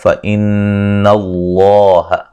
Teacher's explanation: نون مشدد پہ غنہ ضروری ہے، لفظ اللہ کو موٹا ادا کریں گے ، اس سے پہلے حرف پر زبر